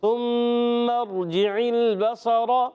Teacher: سا کی ادائیگی ہوتی ہے زبان کا سرا اوپر کے دانتوں کے کنارے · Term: حروف لثویہ